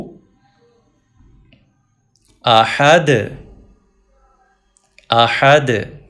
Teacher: دال پہ کلکلا کیجئے، ایکو ساؤنڈ پروڈیوس کیجئے، پیش نہیں پڑی جائے گی چونکہ ہم سٹاپ کر رہے ہیں.